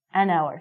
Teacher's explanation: So, because this word hour sounds like a vowel, because the H is silent, we have to say an hour.